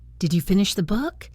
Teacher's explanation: Let it rise on book. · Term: rising intonation